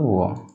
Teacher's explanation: वकारस्य दंतोष्ठम, वकारस्य मतलब वकार, वकार मतलब व, जो व होता है उसका उच्चारण स्थान दंतोष्ठ होता है। अकेले व ऐसा है जिसका उच्चारण स्थान दंतोष्ठ होता है, तो इसको याद कर लेंगे।